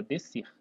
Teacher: a gente não pronuncia esse Szinho aqui, como se pronunciasse só o C, né? Então, isso aqui é um dígrafo, tá?